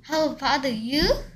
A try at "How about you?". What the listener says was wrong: 왜 하나하나씩 끊어서 소리를 못 내고 끊어서 소리 냈던 걸 빠르게 붙이질 못합니까?